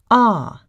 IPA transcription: ɑː